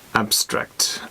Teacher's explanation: So the stress is on the first syllable.